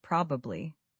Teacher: We drop the middle syllable almost completely.